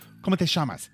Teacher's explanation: They use the double L's instead of a Y. It makes a sh sound